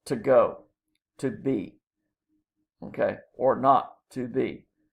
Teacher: And iambic pentameter means that you have 5 feet, total of 10 syllables, that are written in iambs, unstressed, stressed syllable structure